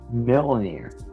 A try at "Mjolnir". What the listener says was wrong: You're saying the last part of it right, but you're putting a